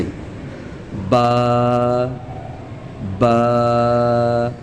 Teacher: बा अदा होता है दोनों होठों के गीले हिस्से से यानी तर हिस्से से।